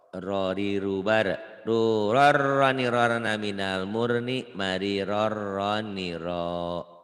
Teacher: Ini tanwin ketemu ro juga idgham bila gunah. Dileburkan, dimasukkan tanpa ditahan. Biasanya di Quran di sini ada tasdidnya.